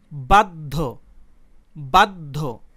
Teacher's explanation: তো নিয়ম অনুযায়ী জ ফলাযুক্ত এই ব্যঞ্জনবর্ণের উচ্চারণ অর্থাৎ এই ধয়ের উচ্চারণ ডাবল হওয়ার কথা ছিল, দ্বিত্ব হওয়ার কথা ছিল, কিন্তু উচ্চারণের সময় ধ দুইবার উচ্চারিত হয়নি। উচ্চারণের সময় একবার দ উচ্চারিত হয়েছে, তারপর ধ উচ্চারিত হয়েছে।